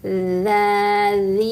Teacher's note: ujung lidah bergesekan dengan ujung gigi seri atas ya. Jadi ujung lidahnya keluar. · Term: huruf dzal